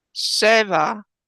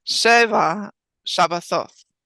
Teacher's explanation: When you put them together, make sure you're accenting the first syllable.